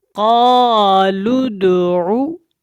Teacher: پر ہے، موٹا ہے، تو اس کو آپ نے ویسے حروف مدہ کی وجہ سے الف کو تھوڑا سا ایک الف کے برابر جو ہے لمبا کرنا ہے